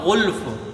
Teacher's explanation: تو غین ہمیشہ پر پڑھی جاتی ہے، حروف مستعلیہ میں سے ہے ، تو اس کو خیال رکھیے کہ یہ گلف نہ ہو